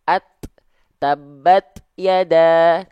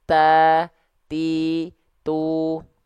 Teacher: melafalkan huruf ta kan Dia ee sifatnya percikan nafas ya Kenapa percikan nafasnya itu lebih terasa ketika huruf ta Dalam kondisi sukun